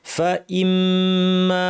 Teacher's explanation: আর যদি না থামি তাহলে এখানে জামিআন তানউইনের পর ফা আছে, আমাদেরকে ইখফা করতে হবে, দাঁত ঠোঁটের উপর এনে ফা বলার জন্য রেডি হয়ে নাক থেকে গুন্না করতে হবে, জামিআন ফা, ফা ইম্মা, মিমের উপর তাসদীদ লম্বা গুন্না